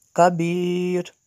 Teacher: یا ساکن کے بعد را ساکن ہو تو یہاں پہ اس کو بری کریں گے